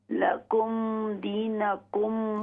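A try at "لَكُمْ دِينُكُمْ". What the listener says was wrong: दीनो नून पर पेश है लकुम दीनुकुम लकुम दीनुकुम और इसी तरह वला अंतुम आबिदून आइन के साथ पढ़ा करें।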